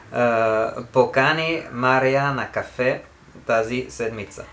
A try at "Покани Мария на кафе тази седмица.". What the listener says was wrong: The way you read it, this would mean you invited. Покани, last syllable.